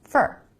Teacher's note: most of the time in a sentence americans pronounce it fur really fast with the reduced vowel